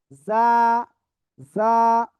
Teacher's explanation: তারপরে আমরা যে অক্ষর শিখেছি সে অক্ষর খেয়াল করবেন, এই অক্ষরটা জিহ্বার আগার সামনে নিচে 2 দাঁতের পেট ও আগার সাথে লাগিয়ে জিজি পোকার ন্যায় একটু আওয়াজ করে এই অক্ষরটা উচ্চারণ করতে হবে,